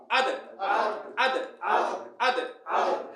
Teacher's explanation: একটা কলকলার হরফ ধাক্কা মারবে মানে জিহ্বার আগাটা দাঁতের গোড়াত লাগি সাথে আবার ফিরে আসবে